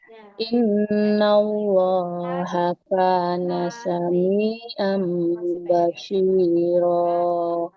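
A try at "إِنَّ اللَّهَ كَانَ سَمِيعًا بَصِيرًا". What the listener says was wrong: Nah, kafnya panjang ibu ya. Innallaha kana sami'an basira.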